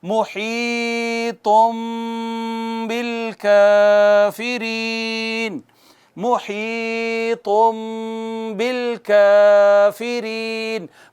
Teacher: حرف اقلاب ہے، یعنی نون ساکن یا نون تنوین کے بعد با آئے گی تو اسے چھوٹی میم سے بدل دے گی